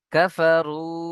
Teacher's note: দিয়ে পড়তে হবে যেমন ইন্নাল্লাজিনা কাফারু র ও পেশ রু এখানে ও মাদ্দা ও মাদ্দাকে এক আলিফ পরিমাণ টান দিয়ে পড়তে হবে